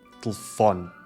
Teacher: A redução vocálica da letra E faz com que a sílaba tónica fó se destaque muito mais